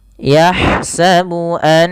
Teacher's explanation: Ghunah adalah cara membaca huruf yang dimasukkan ke rongga hidung kita suaranya. Jadi, masukkan bunyi nunnya sambil kita masukkan ke rongga hidung kita.